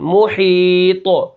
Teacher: آگے کیا ہے، میم پیش مو، ہا یا زیر حی، محی، طا 2 پیش قن، محیطن، وقفاً، محیط، ٹھیک ہے۔ طا کو موٹا کریں گے، ہا کو کھینچ کے پڑھیں گے کیونکہ آگے یا ساکن ہے، یہ یا مدہ ہو گئی، اور پیچھے میم کو بالکل نہیں کھینچنا کیونکہ اس کے اوپر پیش ہے۔